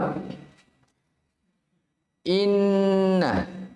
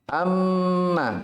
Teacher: harokat guna artinya didengungkan didengungkan sekitar dua harokat dan ketahuilah bahwasanya bunyi dari keluarnya guna itu berasal dari mana dari al-khaisyum hidung ya dari hidung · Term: ghunnah